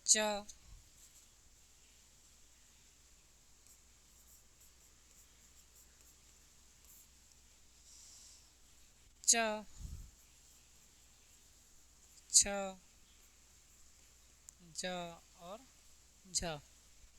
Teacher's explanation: अपेक्षाकृत अधिक होता है। और उच्चारण के बाद वाला भाग संघर्षी हो जाता है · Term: स्पर्श संघर्षी व्यंजन